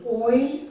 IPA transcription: ɔɪ